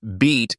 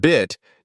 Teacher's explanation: bit differ not just in vowel sound but in length too the vowel in beat is held slightly longer while the one in bit is shorter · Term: vowel length